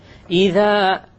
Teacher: The dhal, my tongue is outside. إِذَا. And then when I get to zul, the tongue goes inside.